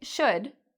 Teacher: It's a very fast vowel sound, so it's a short vowel sound, should. And our lips do not round.